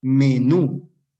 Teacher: tiene la sílaba tónica en la última, es polisílaba y termina en vocal.